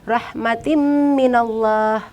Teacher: memasukkan huruf ta ke dalam huruf mim disertai dengan berdengung